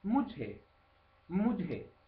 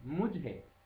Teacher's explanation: Mujhko, a me, può essere detta più semplicemente mujhe, mujhe, con j aspirata, mujhe, a me.